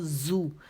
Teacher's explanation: اچھا جیسے زو انگلش کا لیٹر جو زو ہے نا, ورڈ ZOO زو, تو اس کو موٹا کر لیں, وہ. جب آپ زو بولتے ہیں زو تو آپ کے ہونٹ جو ہے گول ہو جاتے ہیں